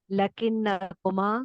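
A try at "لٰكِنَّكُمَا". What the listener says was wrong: थोड़ा सा लाम को लंबा कर लीजिएगा, लाम को थोड़ा सा लंबा, लाकिन।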